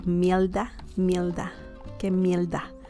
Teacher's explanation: the people from puerto rico they say i think instead of the sound the r sound is more like an l sound